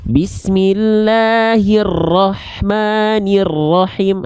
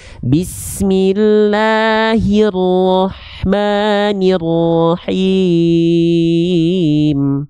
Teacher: Hirro getarannya mungkin hanya 1-2 getaran, dia nggak banyak. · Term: takrir